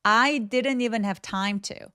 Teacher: I didn't even 아니고 중간에 T 발음 삭제돼요. 왜 그러냐면 원어민들도 NT로 끝나는 단어들의 T 발음을 안 하는 습관이 있어서.